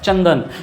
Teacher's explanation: तो न होता है अनुस्वार का